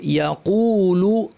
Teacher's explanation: কফ পেশ, কুটা মাঝখানে ভারী হবে